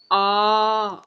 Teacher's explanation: நெடில் எழுத்துக்கு, இரண்டு மாத்திரை, ஆ அப்படின்னு நம்ம இழுக்கிறோம்ல, அப்ப வந்து நம்ம இரண்டு டைம் கண்ணி மேச்சிடுறோம்.